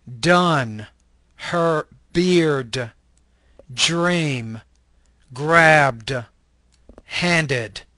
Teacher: This is an alveolar stop voice consonant.